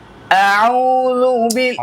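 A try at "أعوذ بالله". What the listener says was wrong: নাকে যায় কেন? আউ স্পষ্ট, নাকে না, ঠিক করতে হবে, ধরে ধরে ঠিক করতে হবে। আউ স্পষ্ট, মাদের হরফ কোথায়? মুখ এবং গলার খালি জায়গা, কোথাও বাজবে না।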